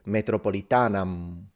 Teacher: But the fact that he's speaking classical Latin in this case helps him with Italians because he's now not pronouncing the M, since the ancient Romans actually told us that. They said, do not pronounce the M if you don't want to sound like a barbarian, which means fully nasalize it, metropolitanam, which makes it sound like Italian, metropolitana.